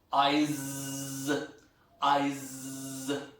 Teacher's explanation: if you pronounce eyes, because the last sound is not s, that becomes z